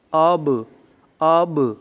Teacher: تو یہاں پر با جو ہے وہ قلقلہ والا حرف ہے، اور یہاں پر چونکہ جزم ہے اور ساتھ وقف جو ہے وہ یہاں نہیں ہے، اس لیے یہ چوتھے درجے کا یہاں پر قلقلہ ہوگا